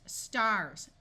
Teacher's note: Notice the S before the T has the unvoiced hissing sound of S, but the S after the R takes on its voice sound of Z.